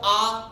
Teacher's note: आ के उच्चारण में मुख पूरा खुल रहा है